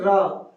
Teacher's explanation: ऐसे वर्ण जिनके उच्चारण में जीभ तालू से लुढ़क कर स्पर्श करे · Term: लुंठित